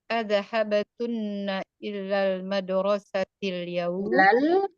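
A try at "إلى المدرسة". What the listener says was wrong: jangan ditasydid, ilal madrasati.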